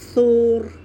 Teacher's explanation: سا کے لیے ہونٹ گول اور را مخفم موٹی پڑی جائے گی